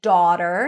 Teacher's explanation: It's a more rounded version of the open A sound